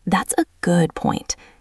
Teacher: Notice the stress on the word good. That is where the feeling is.